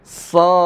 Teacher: Tebal, kemudian ada desisnya, ya, ada desisnya, tebal